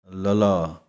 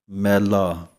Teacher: ਤਾਲੂ ਦੇ ਵਿਚਕਾਰ ਵਾਲੇ ਪਾਸੇ ਨੂੰ ਜੁਬਾਨ ਪੁੱਠੀ ਹੋਵੇਗੀ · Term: ਪੈਰ ਵਿੱਚ ਬਿੰਦੀ